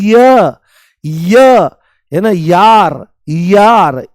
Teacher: य बोलते ही इ की ध्वनि आती है। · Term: अर्ध स्वर